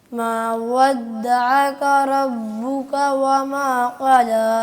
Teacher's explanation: وما قلى कला नहीं, क़ला, ولا कौफ को कौफ को मोटा करके पुर करके पढ़ें जी